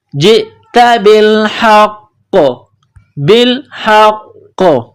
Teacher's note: جب یہاں سٹاپ کریں گے تو قاف کو سائلنٹ کریں گے، قاف جب ساکن ہو جائے گی تو یہاں پر قلقلہ کیا جائے گا